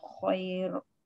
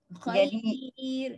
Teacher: Sifat ra berubah, bukan tafkhim dah, bukan tebal dah. Dia jadi nipis.